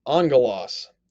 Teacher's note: let's go back you notice here on gloss has no new it has two gammas but we pronounce it like it's an english n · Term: gamma nasal